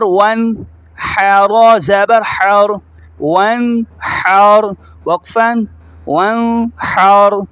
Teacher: واو کو نون کے ساتھ ملایا، ہا کو را کے ساتھ، را کو موٹا پڑھیں گے، جیسے ہجے میں پڑھا جا رہا ہے رواں میں بھی ایسے ہی پڑھا جائے گا